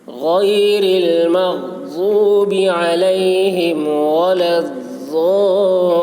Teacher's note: ضاد کو کھینچیں گے اور پر پڑھیں گے، موٹا کر کے پڑھیں گے